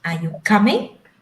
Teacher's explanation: We raise at the end of the sentence.